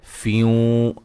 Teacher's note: یہاں نون تنوین کا ادغام مع الغنہ ہے